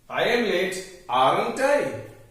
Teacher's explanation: We cannot say amn't I, because there is a problem with consonant cluster. Ma and na cannot be pronounced together.